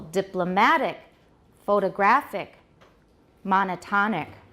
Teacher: where's the stress now on the third syllable